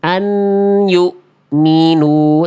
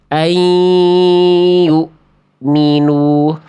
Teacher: seharusnya bunyi n-nya udah enggak ada karena udah masukin ke huruf ya